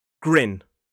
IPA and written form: ɡrɪn (grin)